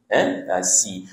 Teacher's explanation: Si ni huruf sin, maka dia ada desiran sikit si.